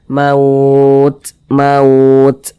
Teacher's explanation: Kita mengucapkannya itu maka ada napas yang kita alirkan akan tetapi kalau huruf Ta ini dia alirannya itu seperti memerecik saja